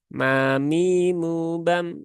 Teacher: Mimnya pendek, maka jangan dipanjangkan di sini dan mimnya juga tipis, maka tipiskan.